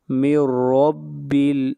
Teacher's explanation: یہاں پر نون ساکن کے بعد حروف یرملون میں سے را ہے، ادغام بلا غنہ ہوگا · را کو موٹا پڑا جائے گا، را کے اوپر زبر ہے